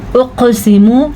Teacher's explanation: क़ाफ के ऊपर कलकला हो रहा है तो ये कलकला हम अदा करेंगे